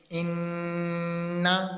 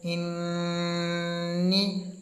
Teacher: اب نون کے اوپر تشدید ہے اس لیے ہم نے نون کی آواز کو کھینچا ہے۔ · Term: غنہ زمانی